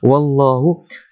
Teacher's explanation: lafzul jalalah dibaca tebal sebab waw itu berbaris fathah.